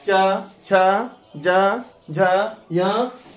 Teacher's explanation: अर्थात आपका जीव ऐसे वर्ण के उच्चारण में जीव जो है तालु में सट जाता है, इसीलिए इसको तालव्य वर्ण कहते हैं।